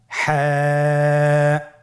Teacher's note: হা হরফটি উচ্চারিত হবে কণ্ঠনালীর মধ্যখান হতে। গলা চিপে ধরে আপনি উচ্চারণ করুন।